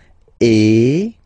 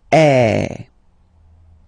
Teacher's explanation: the sound is really open, and normally your mouth should be opened a little bit more than with the accent aigu as well. Okay, so it goes like eh. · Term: accent grave